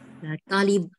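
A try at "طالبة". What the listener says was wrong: Panjang talibah.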